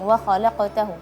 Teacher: Terus wa khalaqtahu. Nah, setelah huruf qaf yang qalqalah tidak boleh ada jeda. Wa khalaqtahu atau khalaqtani, enggak langsung wa khalaqtahu.